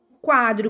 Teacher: quadro a sílaba forte é qua e ela é a penúltima sílaba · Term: paroxítona